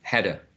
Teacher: we are linking the flap with the following vowel sound. So anyway, if we say hada or hada with d or r, we're linking the consonant to the vowel sound.